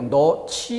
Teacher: 어미 지가 와서 히읗과 결합되며 거센 소리로 너치 이렇게 소리가 나는 거죠